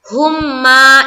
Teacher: ادغام شفوی ہوگا اس لیے کہ میم ساکن کے فوراً بعد دوسری میم آئی